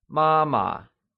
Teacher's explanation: it is pronounced using the high level tone